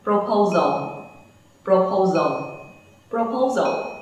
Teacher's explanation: Muốn để ý đến cái final sound của từ này, proposal, tận cùng của cái từ này là âm l, cho nên nó là âm lưỡi sau răng. Vậy chúng ta phải để lưỡi đằng sau hàm răng trên khi kết thúc từ này.